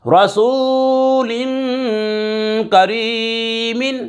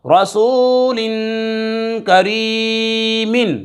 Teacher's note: دو زیر کی تنوین کے بعد کاف حروف اخفا میں سے آ رہا ہے، غنہ کر کے پڑھیں گے